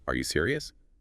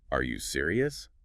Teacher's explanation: add that little upward flick at the end